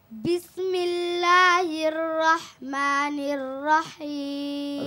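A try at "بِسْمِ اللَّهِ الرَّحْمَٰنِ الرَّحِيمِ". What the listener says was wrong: রাটা ছুটে গেছে, আবার বলো, তুমি তো ভালো পারো, বলো। রহমানির রহিম। হির রহ, রমটা হবে। হির রহমানির রহিম।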